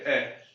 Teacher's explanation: अगर आप ए बोल रहे हो तो होठ कोई काम नहीं कर रहे हैं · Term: होठ उदासीन